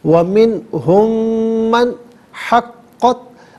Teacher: منہم میں میم ساکن ہے، من کی میم کے ساتھ ملا کر میم کی آواز کو غنے کے ساتھ ادا کریں گے · اب یہاں قاف ہے، دو نقطوں والا قاف ہے، اس سے پر کر کے پڑھا جائے گا۔ اور یہ بات بھی یاد رہے ناظرین کہ یہاں چونکہ مشدد ہے قاف تو اس سے جماؤ کے ساتھ پڑھیں گے، حقت نہیں، حقت۔